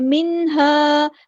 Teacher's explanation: نون ساکن کی آواز کو ہم یہاں ظاہر کر کے پڑھیں گے ، اظہار ہوگا، منہا نہیں کرنا، ہلانا نہیں ہے، منہا، ہاں